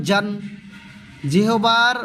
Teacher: মাঝে এবং উপরের তালু থেকে আদায় করিবে অল্প শক্ত করে